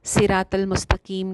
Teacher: صراط المستقیم ہے تو اس کو صراط المستقیم کہہ دینا. قاف کو باریک کر دیا, صاد کو باریک کر دیا